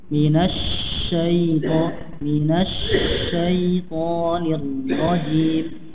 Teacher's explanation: Shinnya lebih sedikit lebih lama karena shin memiliki sifat roqwah.